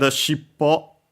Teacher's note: actually it is accented on the last syllable, so be careful.